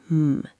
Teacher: It's literally a picture of your mouth closed. Your lips pressed together for m. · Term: the m sound